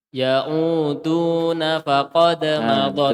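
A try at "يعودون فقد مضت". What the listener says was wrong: Tidak ada nunnya, tidak ada nunnya. Tidak ada huruf nunnya.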